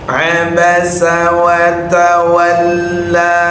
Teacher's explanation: Abasa abasa watta nyambung semua dalam keadaan tidak boleh ada yang dipanjangkan karena baru ketemu panjang pada huruf lam